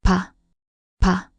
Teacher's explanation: At the beginning of a word it can be closer to an unaspirated soft P sound, while between vowels it often sounds like B.